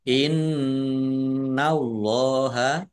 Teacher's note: nun tasdid bacaan ghunah dibaca mendengung ditahan biar tampak mendeng mendengungnya.